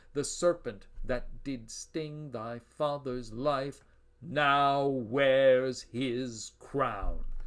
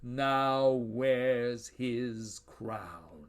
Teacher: monosyllabic words with long vowel sounds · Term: monosyllables